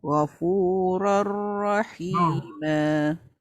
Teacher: Yang tu dia tak dengur, dia masukkan saja tanpa berdengung